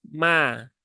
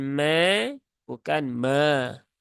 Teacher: ada alif setelah fathah dan pastikan bunyinya tipis